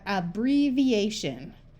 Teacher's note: This I has the long E sound because it's before another vowel